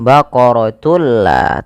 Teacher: ketemu dengan lam kita baca dengan bacaan Idgham bila gunna yaitu dengan cara memasukkan tunnya kepada lam dan diganti bunyi suara nunnya menjadi suara lam